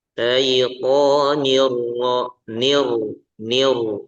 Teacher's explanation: Jadi roknya tebal, kemudian suara roknya itu disamarkan ya.